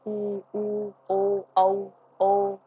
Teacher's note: ठीक है, मध्य ए, इसमें हम मतलब हमारी जीभ कोई काम नहीं करती, वो शांत अवस्था में रहती हैं। और पश्च स्वर में जो जीभ का पिछला हिस्सा काम करता है